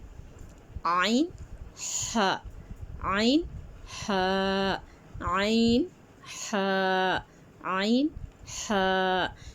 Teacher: عین اور ح کہاں سے ہوتے ہیں؟ حلق کے درمیانی حصے سے عین اور ح ادا ہوتے ہیں۔